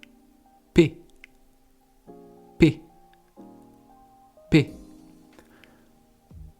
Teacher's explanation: Donc pour faire le P, il faut avoir les lèvres qui se touchent, donc la bouche fermée, et vous allez sortir du son, sortir de l'air d'un seul coup, en ouvrant la bouche.